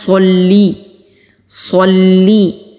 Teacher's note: صلی پڑھنا غلط ہے، لام کے نیچے زیر ہے، یہاں پر صاد ہے، سین نہیں پڑھنا، صاد کو موٹا کر کے پڑھنا ہے